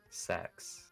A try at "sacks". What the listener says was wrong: Yeah, no, it's, due to your accent, it sounds a whole lot more like sex than it does sack.